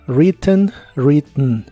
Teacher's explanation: en inglés americano muchas veces la pronuncian usando algo como un golpe de aire desde la nariz